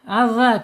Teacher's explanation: makhrajnya ada di ujung lidah menyentuh ujung gigi seri ya. Adza, keluarkan sedikit ya, zal ujungnya.